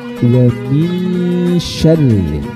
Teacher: Jadi dalam konteks ini nun sukun bertemu dengan shin ini termasuk dalam kategorinya ikhfa hakiki dan termasuk dalam ikhfa ausat, di mana nun sukunnya ini disamarkan huruf shin, tidak berbunyi ang